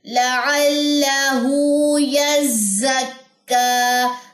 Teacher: لام کی زبر لمبی نہیں کرنی